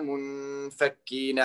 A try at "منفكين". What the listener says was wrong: Herhaal منفكين en meer غنة. Niet langer, maar ik bedoel meer